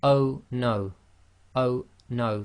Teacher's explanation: the O suddenly stops and there's a slight blocking. That's the um what we say in English is a gloal stop. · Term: glottal stop